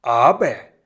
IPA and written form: ˈaːbɐ (aber)